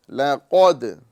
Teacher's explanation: وَهَذَا الْبَلَدِ الْأَمِينِ لَقَدْ خَلَقْنَا الْإِنسَانَ فِي أَحْسَنِ تَقْوِيمٍ، ادائیگی کا خاص خیال رکھتے ہوئے دیکھیں گے، قاف پر ہوگا، دال باریک ہوگا۔ لقد لام باریک، پھر قاف پر اور پھر دال باریک۔